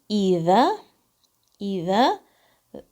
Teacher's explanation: ذال کی آواز زبان کی نوک سے 2 کاؤنٹس